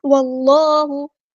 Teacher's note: اللہ کا لام یہاں پہ پوری یعنی ہیوی ادا ہوگا کیونکہ اللہ کے لام سے پہلے زبر آئی ہے